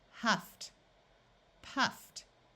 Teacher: Ed is also pronounced like a T after the letter F.